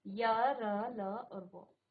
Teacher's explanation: तो आपकी जो जीभ है वो जो है आपके मुख के अंदर किसी भी भाग को पूरी तरह से स्पर्श नहीं करती है बिल्कुल हल्का सा है ना सेमी जो है उसको वो क्या करेगी स्पर्श करेगी उन्हें अंतस्थ व्यंजन कहते हैं।